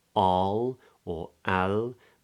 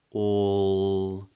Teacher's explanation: so we get that long or vowel